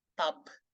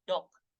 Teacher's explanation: voice stop itu yang menghalang akan jadi devoice apabila hal tersebut terjadi di akhir sebuah kata. Contohnya itu adalah tub, dibaca seperti tub. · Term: devoicing